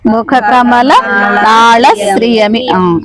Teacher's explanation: ఇక్కడ మీరు నాళ అంటున్నారు నాళకి ల కి దీర్ఘం లేదు కదా